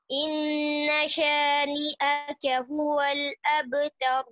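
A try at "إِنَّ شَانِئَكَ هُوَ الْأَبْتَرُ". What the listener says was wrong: نون کو لمبا نہیں کرنا، ان شانئک هو الابتر۔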